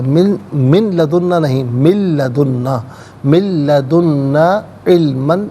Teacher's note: من میں نون ساکن ہے، اسے لدنا کی لام کے ساتھ ملائیں گے اور لام کی آواز کو ادا کیا جائے گا. من لدنا نہیں، من لدنا، من لدنا علماً، یہاں وقف کریں گے تو علما پڑھیں گے.